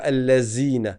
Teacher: Parce que dans leur dialecte, ils transforment beaucoup le zel en zey. Et donc ils vont dire al-lazine.